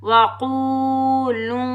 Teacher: क़ाफ हरूफ मुस्तालिया मोटा पढ़ेंगे। क़ाफ वाव पेश क़ू वाव मद्दा एक अलिफ की मिकदार में खींच कर अदा करेंगे।